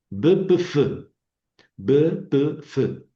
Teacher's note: La B es suave, la P es explosiva y la F es aspirar.